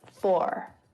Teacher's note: same as the british pronunciation of this word for full so the standard american accent pronounces the r at the end